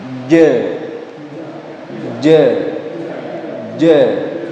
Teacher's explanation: jahar artinya tidak boleh ada aliran nafas yang mengalir ketika huruf Jim diucapkan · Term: jahr